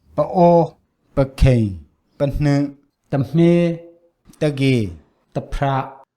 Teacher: There was no indication of polar tone. Instead, the pitch trends toward mid, regardless of the following tone. There's a short duration, which is not surprising for minor syllables.